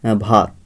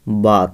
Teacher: ভাতটা কি হয়ে যাচ্ছে এই বাঙালি উপভাষায় বাত হয়ে যাচ্ছে তাই না তাইলে এই যে ভটা কি আছে এখানে ভ এই